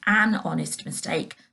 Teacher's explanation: because we can't hear the h, we just hear the O, which is a vowel sound